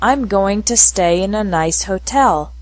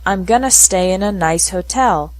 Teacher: in spoken english going to is often pronounced gonna